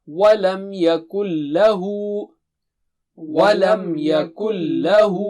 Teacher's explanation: نون بالکل نہیں پڑھا جائے گا